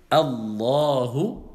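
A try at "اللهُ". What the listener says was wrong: Tout le temps quand on dit Allah, même quand vous allez prononcer Lafzul Jalala, le nom d'Allah Tabaraka wa Ta'ala, vous allez prolonger un peu. Vous n'allez pas dire Allahu.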